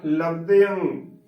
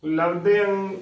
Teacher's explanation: ਅ ਨੂੰ ਟਿੱਪੀ ਅੰ ਦੇ ਨਾਲ ਉਚਾਰਨ ਕਰਨਾ ਹੈ ਗਗ ਦੀ ਆਵਾਜ਼ ਨਹੀਂ ਆਉਣੀ ਚਾਹੀਦੀ